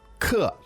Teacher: So the word for class, of course, is 课 ke. Fourth tone, right?